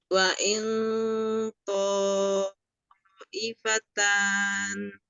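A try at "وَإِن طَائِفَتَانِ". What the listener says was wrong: Masih kurang naik. Pangkal ya, pangkal lidahnya. Po. Po ini kan naik gini ya. Po. Wa il po ifatan.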